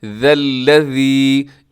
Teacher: اس میں ذال کو اپنے نرمی سے پڑھنا ہے، اسے زا نہیں پڑھنا آپ نے